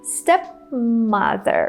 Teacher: we don't release the P here